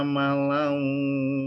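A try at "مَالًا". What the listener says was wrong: panjang. Malau, ada alifnya. Malau.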